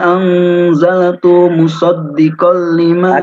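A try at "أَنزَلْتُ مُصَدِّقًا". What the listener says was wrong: Jadi huruf ta ya, tu ke mim ya, harus agak cepat sehingga ta-nya tidak dipanjangkan.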